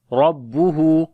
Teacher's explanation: را کو موٹا پڑھیں گے، ہا کو بھی لمبا کریں گے